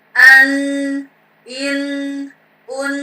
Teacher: pada dasarnya dia makhrajnya di khoisyum ya. Khoisyum itu apa? Rongga hidung ya, rongga hidung seperti itu. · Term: tanwin